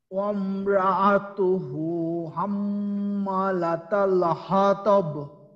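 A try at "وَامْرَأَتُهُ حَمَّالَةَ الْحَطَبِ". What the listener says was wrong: এই যে ওয়ামরাতুহু হইল কেন? এখানে র তো আমাদের মোটা, এখন যদি এখানে ওয়াকফ করেন ওয়ামরাতু, ওয়ামরাতু, ঠিক আছে। এখানে জানি র এর পরে আছে হামজা, র আ, র আ, ওয়া ওয়া ওয়াম র আ তু, তু যদি আমরা ওয়াকফ করি তাহলে ওয়ামরাতু, আর যদি না ওয়াকফ করি তাহলে ওয়ামরাতুহু হাম্মালাতাল হাতাব।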